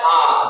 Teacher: आ में जो है वो हमारा पूरा मुंह खुलता है, इसलिए इसमें खुला स्वर आ जाएगा